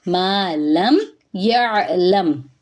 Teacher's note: مالم، ما پہ الف مدہ ہے، ایک الف کے برابر لمبا کریں گے، خالی الف سے پہلے زبر آئے تو وہاں پہ الف مدہ ہوتا ہے، مد اصلی ہوتی ہے، اور میم ساکن کے بعد یا آ رہا ہے تو یہاں پہ ہم میم کی آواز کو ظاہر کریں گے